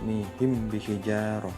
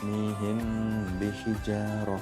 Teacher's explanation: Nah, jadi samar. Mim matinya itu dibaca samar-samar di bibir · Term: ikhfa syafawi